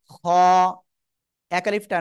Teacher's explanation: এই অক্ষরটা গলার শেষ ভাগ থেকে আমরা উচ্চারণ করব এই শেষ ভাগে জিহ্বার গোলার কাছাকাছি